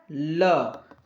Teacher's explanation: पार्श्विक व्यंजन कौन होता होता है ल